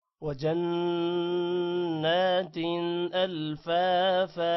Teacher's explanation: وجنات نون پر غنہ ہوگا نون کو تھوڑا سا لمبا بھی کریں گے